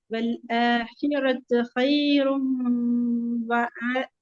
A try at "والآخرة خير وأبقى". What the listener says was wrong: وأبغى இல்ல காஃப் தான் வரணும். நாங்க படிக்கணும் அதை. இப்ப நீங்க காஃபா உச்சரிங்க. وأبقى والآخرة خير وأبقى.